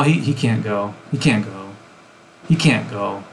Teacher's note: There's no T, but there's a glottal stop there.